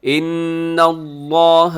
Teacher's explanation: گے تو جمیعاً، ان اللہ، نون مشدد پہ غنہ ہوتا ہے، لفظ اللہ کو موٹا پڑھیے گا، اس سے پہلے زبر ہے